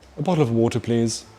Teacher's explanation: There is also a slightly posher T, where your tongue just taps the front top of your mouth.